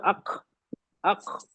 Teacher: जबान को आखिरी हिस्सा ना बिल्कुल चिपकाया नहीं आपने हल्का सा नरम तालू को ना हल्का सा गैप कर दिया गैप होने से क्या होगा ना हवा को जगह मिल गई